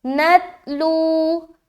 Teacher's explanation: پیش آنے کی صورت میں واو مدہ کا قاعدہ بنتا ہے، اور زبر آنے کی صورت میں واو لین کا قاعدہ بنتا ہے، اور واو لین کو جلدی پڑھتے ہیں اور واو مدہ کو ایک الف کھینچ کر پڑھتے ہیں